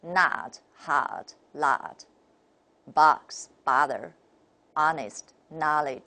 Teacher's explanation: 美 音 发 音 的 时 候， 舌 位 都 要 相 应 的 下 降。